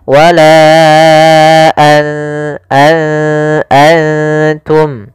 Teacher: kedua-duanya adalah bunyi n, maka ketika bertemu ta, nunnya disamarkan ke huruf ta, an langsung kepada makhraj daripada makhraj huruf ta. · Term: ikhfa